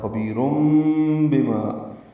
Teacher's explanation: تنوین کے بعد با آنے کی وجہ سے اقلاب ہو رہا ہے، خبیرم بما، نون کی جگہ میم پڑھیں گے، اس لیے اوپر چھوٹی سی میم لکھ دی گئی ہے، جب بھی آگے با آئے گا میم لکھ دی جائے گی۔